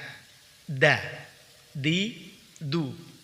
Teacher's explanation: menempelkan ujung lidah dari arah punggungnya pada pangkal 2 gigi seri atas. Perhatikan ini ujung lidah, kemudian dari arah punggungnya, punggung lidah, tapi yang di ujung. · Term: huruf dal